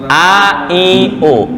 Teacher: Hamzah di sini tenggorokan bawah.